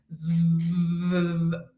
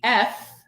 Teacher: And I produce the sound V. I feel vibration in my fingers. Those are my vocal cords vibrating. So this is a voiced sound. In contrast, if I produce the sound of the F in English as in funny, right?